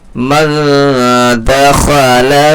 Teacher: اس کی آواز کو ناک میں چھپا کر کے پڑھنا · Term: اخفا